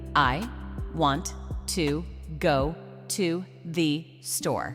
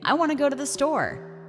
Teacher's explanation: A native speaker may say, "I want to go to the store." The words connect. Want to becomes wanna. The second to becomes weak, and the sentence moves as one rhythmic unit.